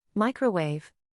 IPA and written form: ˈmaɪ.krə.weɪv (Microwave)